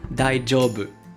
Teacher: Attention à la prononciation, ce n'est pas un J comme en français daijoubu, mais daijoubu. C'est comme si vous aviez un D et un J collés ensemble.